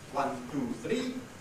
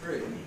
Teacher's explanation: End of a sentence, carrying the nucleus of the intonation. No surrounding sounds to compete with it. And when that's the case, it often forms a diphthong of the type E.